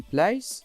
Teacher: /l/ after /p, k/ becomes voiceless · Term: voiceless /l/, voiceless L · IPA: /pleɪs/